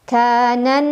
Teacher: Cara membacanya huruf nun didengungkan, ditahan kurang lebih 2 harokat. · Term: gunnah musyaddadah